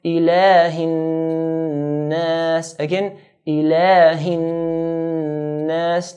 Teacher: we're going to stretch the lam to 2 counts